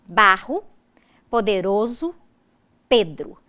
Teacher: o acento recai na penúltima sílaba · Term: paroxismos